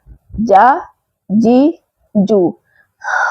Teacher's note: جیم میں زبان کا درمیان والا حصہ اس کے مقابل اوپر تالو کے درمیانی حصے سے لگے جیم ادا ہوگا۔ اگر آپ وسط زبان کو اوپر تالو کے درمیان سے نہیں لگائیں گے تو جیم صحیح ادا نہیں ہوگا۔